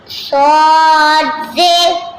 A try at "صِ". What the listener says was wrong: صاد کون سا حرف ہے؟ تو موٹا آواز کرے نا.